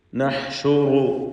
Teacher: ഹ വ്യക്തമായി മഖ്റജിൽ നിന്ന് ഉച്ചരിക്കണം. തൊണ്ടയുടെ മധ്യമാണ് ഹാഇൻ്റെ മഖ്റജ്. നഹ്ശുറു, റാഇന് തഫ്ഖീമാണ്.